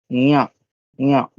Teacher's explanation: और नासिका के साथ अब आप उसको याद करिए ना, नासिका च, तो यहाँ जो है वो कहाँ का है, तालु। यानी आप आपकी जिह्वा को तालु की तरफ ले जाइए और नासिका से बोलिए